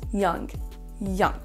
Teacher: Le premier, c'est qu'on ne dit pas young, on ne prononce pas le OU comme le son OU français. On va avoir quasiment un son E.